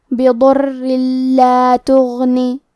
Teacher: کلمت تغنی میں غین کی ادائیگی حلق کے اوپر والے حصے سے ہے۔ غین حروف التفخیم میں سے ہے تو ہم یہ حرف کو موٹی آواز میں پڑھیں گے۔ · تو ہم یہ تنوین کو لام میں ملا کے بغیر غنہ سے لیکن تشدید کے ساتھ یہ حکم کو ادا کریں گے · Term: الادغام بغیر غنہ